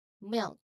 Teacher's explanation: So it's a quick shift from the L to the K. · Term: LK cluster